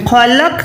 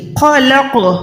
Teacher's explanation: قوف کو لوٹائیں، پروپر لرزش دیں آواز میں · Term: حروف قلقلہ